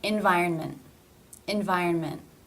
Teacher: cluster comes at the end of a word or a syllable the T is pronounced not as a real T but actually as a stop for example environment environment you don't generally release that in conversation